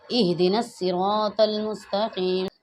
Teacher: ہا سینے سے ادا ہوگی، سینے سے آواز آئے گی